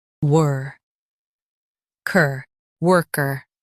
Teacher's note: Stress work and keep er soft. It's quick.